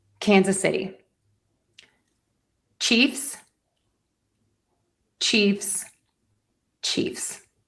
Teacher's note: Chiefs gets all of the stress because it's one syllable.